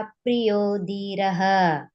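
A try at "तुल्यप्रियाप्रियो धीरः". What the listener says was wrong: ಸರಿ ಸರಿ ಮಾಡಿದ್ರಿ ಇಲ್ಲಿ ಧೀರ ಮಹಾಪ್ರಾಣ ಬರುತ್ತೆ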